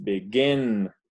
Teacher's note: begin, son dos sílabas y pronunciamos begin. La última es la que está acentuada. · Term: la sílaba tónica